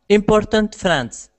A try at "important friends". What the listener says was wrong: Yes, important friends, because the first time round you said the important a bit French style, like important or something like that, but you changed it.